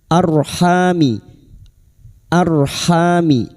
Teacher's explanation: Ra sukun yang didahului fathah. R sukun yang didahului fathah dibaca tafkhim. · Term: tafkim